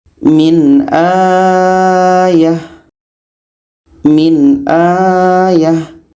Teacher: ada Hamzah setelahnya ada Alif Hamzah ini berbaris di atas jadi ini kita baca dua harakat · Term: mad badal